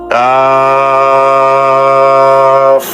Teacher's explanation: জিহ্বার গোড়ার একটু আগে তালুতে লাগবে, স্বাভাবিক উচ্চারণ হবে